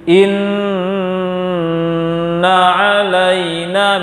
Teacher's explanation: Tahan pada makhraj mim, tahan pada makhraj nun, insyaallah akan keluar dari hidung. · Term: nun tasydid